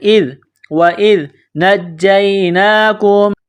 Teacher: زبان تھوڑی سی باہر نکالیں گے ذال کو پڑھتے وقت